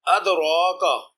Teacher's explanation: اقتربا میں قاف مجزوم پر قلقلہ کرنا ہوگا۔ ادراکا، اس کلمہ میں دال ساکن حرف قلقلہ ہے اور دال پر قلقلہ کیا ہے۔